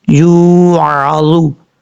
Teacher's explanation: یا کے بعد جو واو ہے یہ واو مدہ ہے، 1 الف کی مقدار، اس کو لمبا کر کے پڑھیں گے کیونکہ واو ساکن سے پہلے پیش ہے اس لیے اس کو لمبا کریں گے۔